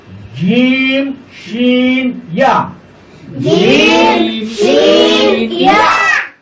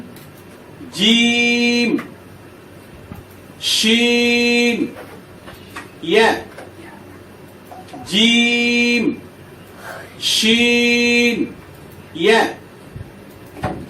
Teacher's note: জিহ্বার মধ্যখান তার বরাবর উপরে তালুর সঙ্গে লাগাইয়া শক্ত করে